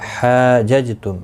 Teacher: جیم ساکن پر قلقلہ ہوگا، حا الف مدہ ہے، 1 الف کی مقدار کے برابر کھینچ کر پڑھیں گے.